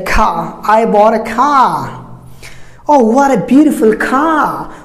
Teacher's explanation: But British don't pronounce the R that comes in the end of a word. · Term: British R sound